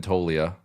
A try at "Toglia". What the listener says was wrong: No, it's not Tolia. It's like Tog. But there's like a V or something in there. Isn't there? Oh, it's the G that I'm thinking of.